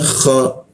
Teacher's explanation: di atas jakun huruf kha ada ngoroknya dia